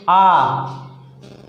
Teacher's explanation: जैसे आप कह दीजिए आ, मुंह जिसे आ कहें तो दोनों होठ है जो हैं उसमें काफ़ी जगह बन जाती है। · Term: विवृत